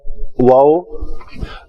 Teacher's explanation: واو، تو اس کے لیے شفتین گول ہوں گے